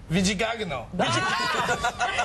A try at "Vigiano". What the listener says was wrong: You always add one too many syllables. Vigiano.